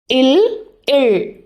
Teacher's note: காற்று நாக்கு நடுவில் வர முடியாமல் அதுக்கு பதிலாக நாக்கோட இரு பக்கமாக தடை இல்லாமல் வெளியேறும். அதனால் அந்த ஒலி மென்மையாக பக்க வழியாக கேட்கும். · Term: மருங்கொலி